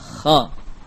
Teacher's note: Kita merasakan ada aliran nafas yang keluar bersama pengusapan huruf kha ini. Kemudian rakhawah. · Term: hams